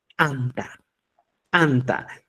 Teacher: Es explosivo. La lengua se choca con los incisivos superiores y ese proceso de fricción, como diríamos, se pega a los incisivos superiores y genera pues explosión.